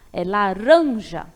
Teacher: Então, a tônica vai ser o ran.